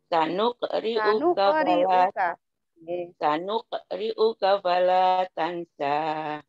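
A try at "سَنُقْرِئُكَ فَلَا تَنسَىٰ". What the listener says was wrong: Tanun sukun ketemu sini Bu. Tanunya kurang. Tanukriuka fala tansa.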